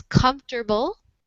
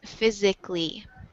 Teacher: The schwa has kind of just disappeared. So now in the United States, it's just pronounced with 3 syllables instead of 4.